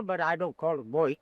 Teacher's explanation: So his T's, rather than being fully pronounced or enunciated, are instead swapped for soft D's. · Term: flapping